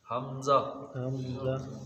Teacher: حلق کے نچلے حصے سے. حمزہ ہا یہ حلق کے نچلے حصے سے ادا ہوتا ہے